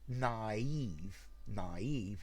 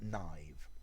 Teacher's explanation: f but these two dots they tell you that it's naive it's not a diphthong you split the two